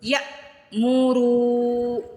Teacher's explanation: یہاں پہ رو کو سٹریچ بھی کریں گے, کھینچ کے ادا کریں گے کیونکہ پیش کے بعد واو ساکن آ رہا ہے